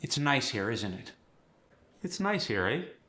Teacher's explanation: don't forget the intonation. Keep it friendly and upward. You're checking in, not declaring.